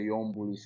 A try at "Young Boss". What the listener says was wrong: you keep mistaking young boss for young bull. I'm correcting you. You keep mistaking young boss for young bull. My name is Young Boss. I'm not Young Bull. I am Young Boss.